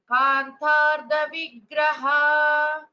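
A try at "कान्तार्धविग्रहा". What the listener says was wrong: Just two small corrections. And then in the last word, Kantardha. Dha is a Mahaprana.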